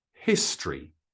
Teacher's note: pronunciation has two syllables it's it's not history it's history so notice that that o actually disappears a little bit when we pronounce it history